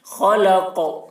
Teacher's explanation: خا کی آواز بھی موٹی ہوگی، خلق، قاف میں قلقلہ کرنا ہے، خلق۔